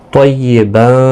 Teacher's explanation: یہاں پر بھی اخفاء حقیقی ہوگا، تنوین کے بعد حروف اخفاء کا فا آیا ہے